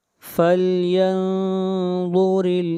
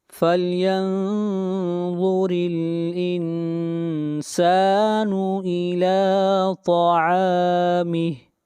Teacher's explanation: را کو باریک پڑھیں گے